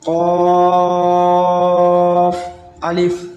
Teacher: یہ قاف حروف مستعلیہ میں سے بھی ہے، اس کو اوپر بھی پڑھیں گے اور اسے کھینچنے کی مقدار بھی 5 الف ہے